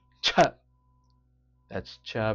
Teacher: CH that's CH with a strong gush of breath